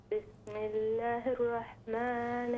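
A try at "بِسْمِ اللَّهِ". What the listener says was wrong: بسم اللہ الرحمن الرحیم۔ بسم اللہ، لام کو لمبا کریں، بسم اللہ پورا الف۔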